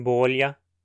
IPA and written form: boʎa (bolha)